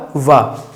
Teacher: दांत और ओष्ठ दोनों मिल रहे हैं, तो इसको हम लिखेंगे दंतोष्ठ।